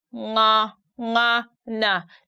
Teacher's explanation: you stick your tongue at the back upper part of your mouth and then the voice comes through your nose